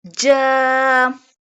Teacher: It sounds ja, ja, and the addition of alif sakina, so it's stretched.